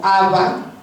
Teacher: que una B se haga fricativa o sea como Aba eh en contexto intervocálica